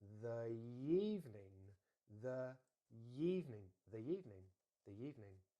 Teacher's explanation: instead of saying the evening, two very similar sounds, we're going to have that y in between, so it becomes the evening, the evening, the evening, the evening.